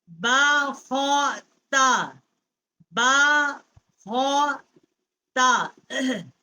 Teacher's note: خا جو ہے یہ حروف حلقی ہے، وسط حلق سے اس کا مخرج ہے